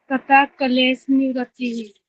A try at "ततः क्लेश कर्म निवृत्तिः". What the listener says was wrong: कर्म ही कर्म ही खा गया आप तो। कर्म रह गया तो फिर धर्म में एक समाधि कहाँ रहेगी? फिर से बोलो।